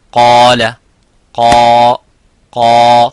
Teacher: so the alif is mufakham, it is a heavy because of the qaf. So whenever the letter is heavy, you make the letter alif qaf, the letter alif of mad, heavy.